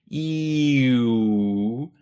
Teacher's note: if you gradually slip from E to U, E-U, your tongue will move from the top front to the top back, E-U. You may also notice what's going on with your lips.